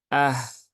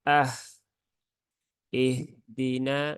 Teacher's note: Berarti suaranya mengalir dan ketika diucapkan itu disertai dengan aliran udara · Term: rakhaah dan juga hams